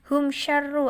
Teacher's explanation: dengan Hamzah dalam satu kalimat humsafar ruh adalah izhar syafawi karena ada mim sukun bertemu dengan huruf Sya dibaca jelas tanpa mendengung